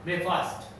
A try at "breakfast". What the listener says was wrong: It's not fast, dear. It's fast. Breakfast. Yes, breakfast.